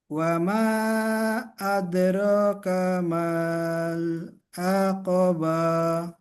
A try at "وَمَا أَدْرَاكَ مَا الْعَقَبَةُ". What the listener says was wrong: মাটা টান হবে না। ওয়ামা, এই মাটা টান হবে, দ্বিতীয় যে মাটা আছে ওটা টান হবে না। ওয়ামা আদরাকা মাল আকাবা।